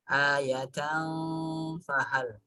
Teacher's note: Ketika membunyikan tanwinnya langsung masuk ke huruf fa sehingga terdengar seperti dengung, tapi bukan dengung ya. Menyamarkan tanwinnya masuk ke bunyi fa. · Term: ikhfa